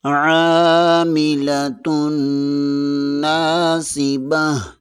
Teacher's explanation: لام کو بریک پڑھیں گے۔ تا 2 پیش کے آگے نون مشدد ہے، یہاں پر غنہ لازمی ہوگا۔ نون زبر کے آگے الف مدہ ہے، اسے 1 الف کے برابر کھینچ کر پڑھیں گے۔